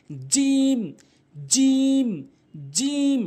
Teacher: সঠিক উচ্চারণ হচ্ছে জিহ্বার মাঝখান উপরে তালুর সঙ্গে · জিম ভুল উচ্চারণ, জিম ভুল উচ্চারণ, সঠিক উচ্চারণ হচ্ছে জিহ্বার মাঝখান উপরের তালুর সঙ্গে জিম, জিম, জিম, সঠিক উচ্চারণ জিম, জিম, এভাবে।